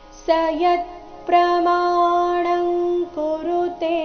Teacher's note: ಸ ಆದ ನಂತರ ಮುಂದಿನ ಶಬ್ದ ಜೋಡಿಸಿ ಹೇಳಬೇಕು